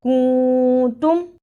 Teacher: کنتم، اخفا ادا کرنے کا طریقہ، نون ساکن کی آواز کو تھوڑی دیر ناک میں چھپا کر غنہ کرنا ہے